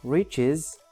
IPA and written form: rɪʧɪz (riches)